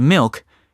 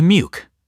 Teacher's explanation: It's like the L melts into a W or even disappears altogether. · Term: L vocalization